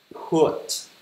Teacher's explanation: âm P bật hơi ra